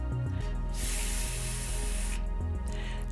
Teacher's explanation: A voiceless labiodental consonant sound.